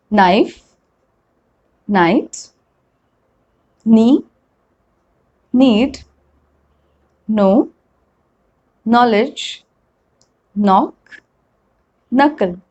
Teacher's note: the spelling is k and n but i'm pronouncing only n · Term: silent letter k